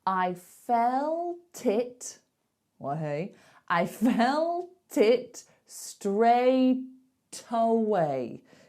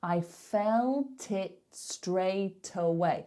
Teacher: can you hear those t's being carried over to the next word we are not putting a gap there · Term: link